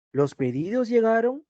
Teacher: como te das cuenta, aumenta, por eso es ascendente, el sonido aumenta.